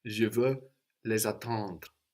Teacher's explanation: So again, now we have les for them, pronounced les, but the S is popping up again, activated by the vowel of attendre, and that S between vowels sounds like a Z